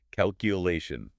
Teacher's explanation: Really focus on that third syllable stress.